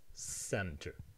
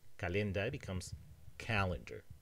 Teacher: Centrum becomes center with an s center. However calendae keeps the k sound.